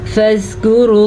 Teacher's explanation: را کو پر پڑھیں گے کیونکہ را پہ پیش ہے